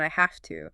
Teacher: That V sound in have often becomes an F sound, I have to, because the T in to is voiceless and F is easier to say right before it.